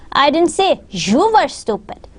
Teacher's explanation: So my stress on the word you made other people understand that that wasn't about them.